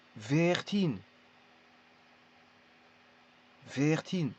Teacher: Vir, et là, il y a une petite déformation du mot qui est virtin. Alors, le V ici, il est entre le F et le V